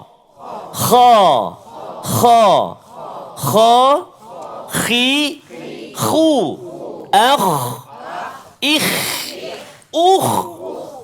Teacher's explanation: Permulaan rongga kerongkongan kita, atas, bahagian atas. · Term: huruf kha